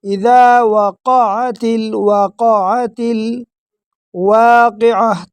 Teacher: تا کو ڈائریکٹ لام کے ساتھ ملیں گے، بیچ میں جو الف ہے وہ زائد الف ہے اس کو حذف کر دیں گے